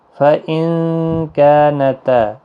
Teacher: نون ساکن کے بعد حروف اخفا کاف آیا، اخفاء حقیقی ہوگا